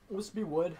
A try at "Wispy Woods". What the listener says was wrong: Excuse me, it's actually Wispy Woods with an S at the end. No, you said Wispy Wood. You said, no, you fucking said Wispy Wood.